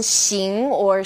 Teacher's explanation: this sound is somewhere in the middle of sh and S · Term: X